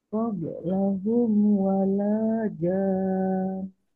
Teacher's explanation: Wala, lanya panjang, lanya 2 harokat.